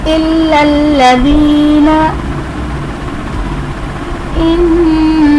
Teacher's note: इन्नल्लज़ीना में नून मुशद्दद है, इसमें हम गुन्ना करेंगे · इनमें जितने भी लाम हैं, जो भी लाम हैं, ये सब बारीक पढ़े जाएंगे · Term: लाम बारीक